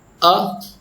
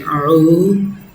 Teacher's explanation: Hamza sound comes from the bottom of the throat, and Ain sound comes from the middle of the throat. So make different sound.